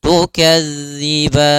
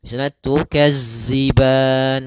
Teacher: sempurnakan daripada makhraj huruf zal, jangan sampai terbaca dengan huruf zai